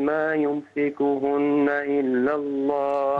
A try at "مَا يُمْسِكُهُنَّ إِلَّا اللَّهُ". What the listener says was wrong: ما يمسكهن إلا الله غن النون المشددة